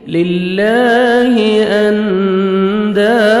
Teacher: اخفا کریں گے، نون ساکن کے بعد 15 لیٹرز میں سے دال ہے، نوز میں ساؤنڈ لے کے جائیں گے